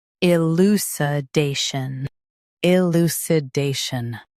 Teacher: I, lu, si, day, shun, elucidation. Stress day and keep shun soft. Elucidation.